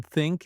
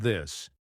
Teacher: put your tongue lightly between your teeth and push air for think and add voice for this.